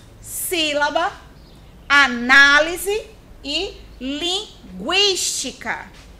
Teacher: Proparoxítonos. O acento tônico recai na antepenúltima sílaba. Exemplos: sílaba, análise e linguística.